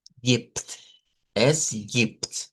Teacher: la B se cambia por una P en este sonido